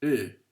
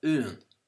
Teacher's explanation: another very common pronunciation of AO in Ulster, and especially East Ulster, was of an unrounded U, like in Japanese